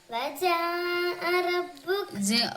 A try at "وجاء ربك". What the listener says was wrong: ഒന്നും കൂടി ജാക്ക് നീട്ടി കൊടുക്കണം.